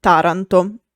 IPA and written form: ˈtaranto (Taranto)